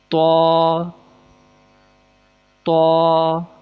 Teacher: زبان کی نوک کو اوپر کے دانتوں کی جڑ سے ملانا ہے